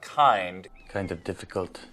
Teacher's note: In German, the consonants at the ends of words are devoiced, and this carries over into English.